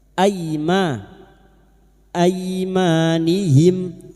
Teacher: Aima fathah diikuti alif dua harakat kita panjangkan mad thai. Aimanhim.